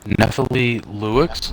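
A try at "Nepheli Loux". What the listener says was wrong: It's a Hlu. Or Hugh. You don't pronounce the X.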